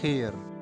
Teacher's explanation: Il représente le son kh. C'est le son de la jota espagnole, ou comme si vous racliez doucement votre gorge.